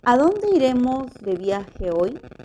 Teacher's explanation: estas oraciones interrogativas pronominales siempre poseen entonación final descendente